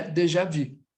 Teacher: No francês aqui é literalmente vi, com um biquinho.